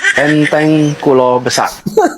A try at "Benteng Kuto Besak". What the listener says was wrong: bukan kulo Pak tapi Kuto ya Pak